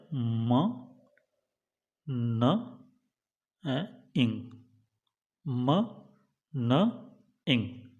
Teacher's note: तो ये जो नेजल्स हैं इनमें कठोर तालु को नीचे की ओर करने से मुख गुहा बंद हो जाती है और वायु का जो निष्कासन है वो नासिका गुहा में से होकर के गुजरता है, और उस स्थिति में आपकी जो तीन ध्वनियाँ हैं म, न, अंग, ये निकलती हैं और इस तरीके से ये तीन नेजल्स।